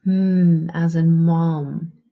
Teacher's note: the place of articulation is the lips. The manner of articulation is that it's a nasal